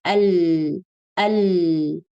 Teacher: frontal part of the tongue is stopping the sound · And the sound comes from the sides of the tongue. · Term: Lam